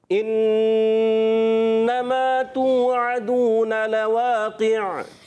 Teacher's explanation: اچھا بعض بچے کرتے ہیں یہاں پر انما اے نہیں پڑھنا، ان حمزہ کو خوب واضح کر کے تحقیق سے، اور جو ہے حمزہ کی زیر کو خوب واضح کریں گے